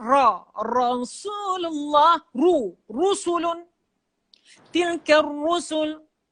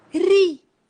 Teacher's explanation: Tetapi ra yang berbaris bawah, dia sifat dia nipis. Ri. Bukan ri.